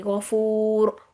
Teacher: غین موٹا پڑا جائے گا، اور را بھی موٹی پڑی جائے گی